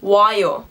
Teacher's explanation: But because we have an o and an a, we can combine them because Korean has this beautiful thing called diphthongs, where you can combine 2 vowels. So we take an o and an a and make it a wa. So 오다 would be 와요.